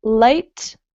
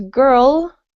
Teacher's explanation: light your tongue is at the front versus girl your tongue is further back in your mouth